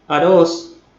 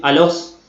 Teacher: los chinos no tienen directamente el sonido del fonema r no lo tienen entonces directamente lo reemplazan por la l